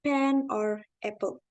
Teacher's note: the consonant p is produced by closing the lips